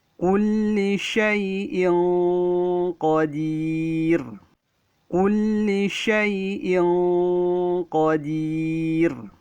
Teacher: Ya, antum perhatikan pada huruf hamzah yang berbaris 2 di bawah namanya kasrotain bertemu dengan huruf qaf. Maka cara membacanya didengungkan dengan cara samar dan tebal. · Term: ikhfa